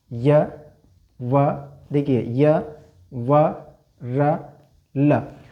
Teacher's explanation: इनका जब हम उच्चारण करते हैं तो ऐसा महसूस होता है जैसे हमारी जिह्वा कहीं पर स्पर्श नहीं कर रही, और कर भी हो तो हल्का सा स्पर्श करती है। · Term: अंतस्थ व्यंजन